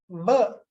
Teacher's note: There's a vibration, so it is voiced. Then lips and the upper lip and the lower lip and the teeth are involved.